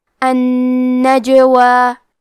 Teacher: کلمت النجوہ میں حرف الجیم پہ جزم ہے تو ہمیں حرف الجیم کو قلقلہ سے پڑھنا ہے